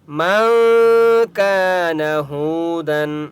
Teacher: کاف کو ایک الف کی مقدار کھینچ کر پڑھیں گے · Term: الف مدہ